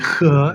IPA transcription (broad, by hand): x